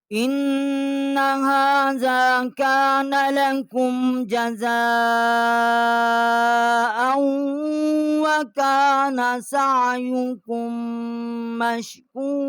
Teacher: ہم نے جزا 4 الف جتنا آواز یہاں بلند کی ہے